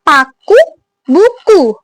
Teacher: posisi lidahnya itu tinggi atas, menggunakan bagian lidah belakang, posisi mulutnya tertutup.